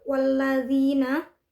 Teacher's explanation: alif lam yang bertemu dengan lam. Cara membacanya adalah alif lam tersebut dimasukkan ke huruf lam. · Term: al-syamsiyah